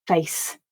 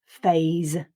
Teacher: second word is phase this one practicing the z sound so it's the voiceless and voiced contrast